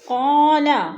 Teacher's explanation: قال الف خالی سے پہلے قاف کے اوپر زبر ہے تو الف مدہ کو ایک الف دو حرکات کے برابر کھینچ کر پڑھیں گے